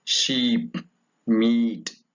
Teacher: Character is high, front, tense vowel.